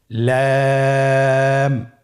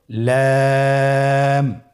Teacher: লাম হরফটির মাখরাজ হলো জিহ্বার আগার কিনারা উপরের দাঁতের মাড়ির সঙ্গে লাগিয়ে উচ্চারিত হয়।